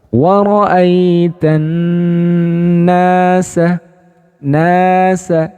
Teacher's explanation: Jadi na-nya itu setelah didengungkan kemudian ditahan 1 alif. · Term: mat tabi'i